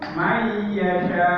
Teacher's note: Maka cara membaca idgham bi gunnah dan idgham bila gunnah ini, kalau idgham bi gunnah, nun sukunnya ini dimasukkan ke ya. nun sukun dimasukkan ke ya, ya, dengan dengung.